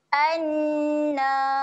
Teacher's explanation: Jadi panjang dua harokat. Okey, dengung kemudian panjangkan dua harokat.